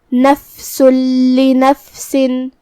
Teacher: پھر حرف اللام ہے کلمت لنفسن میں، یہاں حکم ہے ادغام بغیر غنہ، تو جو کہ تنوین کی اصلیت نون ساکن ہوتی ہے تو ہم یہ تنوین کو لام میں ملا کے بغیر غنہ سے لیکن تشدید کے ساتھ یہ حکم کو ادا کریں گے۔ نفس لنفسن کلمت لنفسن کے آخر میں سین کے نیچے تنوین زیر ہے۔